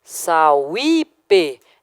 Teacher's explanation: Parece que ele está em hiato com vogal anterior, né? Mas isso aqui é um falso hiato, porque na verdade o U é uma semivogal que está em ditongo com A